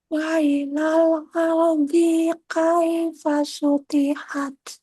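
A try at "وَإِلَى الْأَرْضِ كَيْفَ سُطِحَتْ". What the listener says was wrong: Ardi kaifah, dinya pendek.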